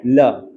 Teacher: Seventh one is lateral, सिर्फ एक lateral है हमारे पास और वो है ल। ल पार्शियल क्लोजर होता है और हवा जो है हमारे टंग के आजू बाजू से निकलती है।